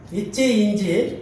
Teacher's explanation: நாவின் இடையில் அன்னத்தை தொடுவதால்